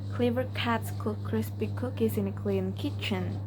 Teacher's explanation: The k sound is a voiceless velar plosive produced by blocking the airflow at the soft palate or velum